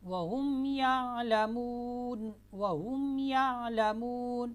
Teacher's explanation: وَهُمْ يَعْلَمُونَ، میم ساکن کے بعد با، میم اور الف کے علاوہ باقی 26 حروف میں سے کوئی بھی آ جائے تو میم کو اپنے مخرج سے ظاہر کر کے پڑھیں گے